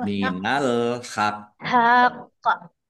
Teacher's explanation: ditekan dulu baru di qalqalahkan baru dipantulkan